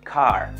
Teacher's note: la lengua se pliega completamente hacia atrás y tapa la garganta